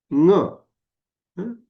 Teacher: असा हा ङ चा उच्चार आहे, तो कंठामधून होतो. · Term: अनुनासिक